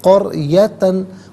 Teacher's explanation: قریتن میں را ساکن ما قبل کاف پر زبر ہے، را ساکن کو پر کر کے پڑھیں گے۔